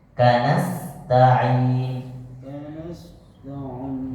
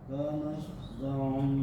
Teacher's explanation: Sin lebih tipis, jangan jadi shad. Kanasta'in, desisnya kecil sekali, seperti desis ular.